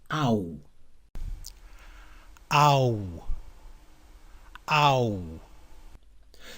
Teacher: its starting point is ah and then we gradually glide into oo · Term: diphthong